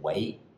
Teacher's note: most people seem to use second tone when they answer the phone